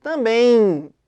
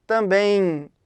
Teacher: Sai um I nessa pronúncia. Esse é um ditongo nasal, porque se você reparar, o som sai anasalado.